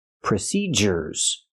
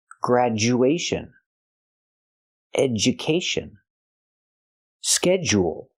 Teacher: when you have du in the middle of a word we normally use the J sound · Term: hard J sound